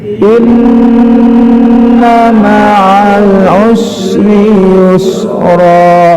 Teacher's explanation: Inna ma'al usri yusra, ya, sama, nun bertasdid ditahan karena gunnah musyaddadah, ma'al masuk alif lam qamariyah, ain, ya, bukan us, ya, ma'al masuk ke sin meringis, usri yusra 2, ya.